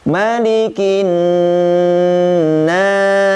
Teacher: huruf nun ya itu ditahan ya karena huruf nun termasuk huruf ghunnah